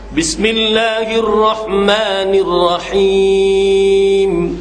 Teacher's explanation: Ra tu bagi ada takrir dia. Jangan banyak sangat.